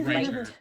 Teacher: You got to really aspirate those T's.